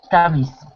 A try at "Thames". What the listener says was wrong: Thames. Not Thames. Listen, Thames. It's not written the way it's pronounced. It's written Thames, but it's pronounced as if there's no H. Thames.